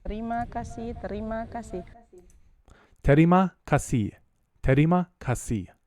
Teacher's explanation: The R sound sounds a lot to me like a bit of a flap and not a full traditional English R, but more of a terima kasih.